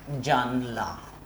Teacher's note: এই যে জানালা, আমরা অনেক সময় দ্রুত উচ্চারণ করি জানলা। মাঝখান থেকে যে আ, এই আটা এখানে নেই, বিলুপ্ত হয়ে গেছে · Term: মধ্য স্বরলোপ